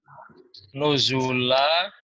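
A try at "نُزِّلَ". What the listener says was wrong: Zanya kasro, udah dibantu kasro. Nuzila. Zanya sudah ada kasronya ini, nggak usah dirubah. Nuzila.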